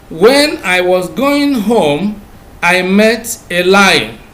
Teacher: the rising falling tone is used in listing items and also in complex sentences that begin with the subordinate clause